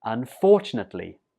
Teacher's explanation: The stress goes on the 2nd syllable here.